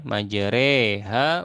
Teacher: Nah, di tengah-tengahnya E. Nah, itu namanya imalah ya. Nah, miring atau condong ya.